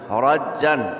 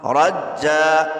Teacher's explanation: رج اذا رج، تا لام زیر تیل، اذا رجت حمزہ را زبر ار، ضاد پیش طو، ارض را جیم زبر رج، جیم دو زبر جن، رجن وقفاً، رجا. یاد رکھیے دو زبر کو وقف کی حالت میں الف سے بدل دیں گے تو اس کو کہیں گے وقف بالابدال مع الالف.